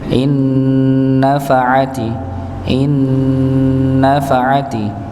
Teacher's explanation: dengungnya sempurna ya, jadi tidak melibatkan pada bibirnya atau mulut ya, jadi dia gunnahnya keluar dari hidung